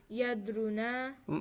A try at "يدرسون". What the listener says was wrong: Yadrusu. yadrus. You really don't like the S, you guys.